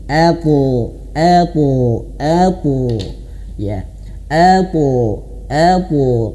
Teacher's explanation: Jadi meskipun sebenarnya bukan ke o ya tapi mirip ke o. Mirip ke O, tapi dia pangkal lidah naik · huruf th yang qalqalah itu harus pantulannya ke tebal ke o